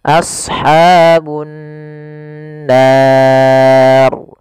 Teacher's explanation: Apabila ada nun berharakat tasydid, maka kita hukumi dengan bacaan gunnah. Cara membacanya yaitu menahan suara gunnahnya, tidak langsung.